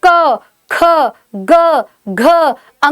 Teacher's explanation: आपको खुद प्रेशर महसूस होगा आपके केवल गले पर, इसलिए क वर्ग को कंठे व्यंजन कहा जाता है